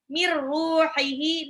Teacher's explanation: Mir ruhihi, nun sukun ketemu ra, ini idgham bila gunnah ya. Nun sukun ketemu ra, idgham bila gunnah, langsung lebur saja tanpa dengung dan tanpa ditahan.